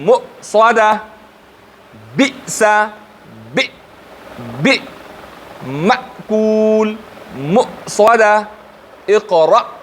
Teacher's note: حمزه مثال مې ورکه چې حمزه شدیده حرف ده، هلته وګورئ آواز څومره فوراً بندیږي، حرف قوي او سخت ادا کیږي